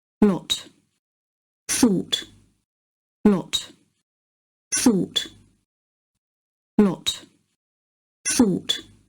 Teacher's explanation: in Scottish Standard English, these vowels are merged, meaning they are pronounced the same, with both words using the thought vowel, aw.